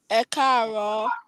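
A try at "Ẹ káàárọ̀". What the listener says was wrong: Ekaro. Your ro must go down. So can you try it again now with ekaro?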